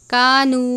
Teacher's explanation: یہاں پر آپ نے نو نہیں پڑھنا یعنی آواز ناک میں نہیں لے کر جانی